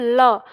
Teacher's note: पार्श्विक वर्ण का मतलब होता है कि जब किसी वर्ण का उच्चारण किया जाए और हवा जीभ के दोनों ओर से पास से गुजरे। ठीक है? तो वो पार्श्विक वर्ण कहलाता है। · जैसे हम बोलते हैं ल। तो ल जब हम बोलते हैं तो हमारी जीभ मुड़ के दंत मूल के पास होती है और जो हवा है वो जीव के दोनों ओर से निकलती है।